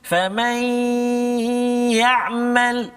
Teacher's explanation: Kemudian nun mati bertemu dengan ya. Famai, nun mati masuk dalam ya, dengung 2 harakat